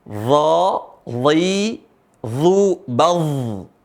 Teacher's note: Perhatikan cara bacanya, sama tempat keluarnya. Ujung lisan ketemu ujung gigi seri. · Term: huruf dha